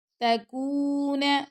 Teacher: تا کو باریک پڑھیں گے، کاف کے ساتھ واو مدہ ہے تو کاف کو ہم 2 سیکنڈ تک لمبا کریں گے، اور نون کو لمبا نہیں کرنا۔